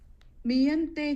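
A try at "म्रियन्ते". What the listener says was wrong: Mriyante. There's a mri, not me. It's mri. Mriyante.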